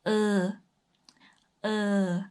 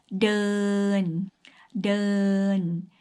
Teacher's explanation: similar to er sound in english but the r sound is really really weak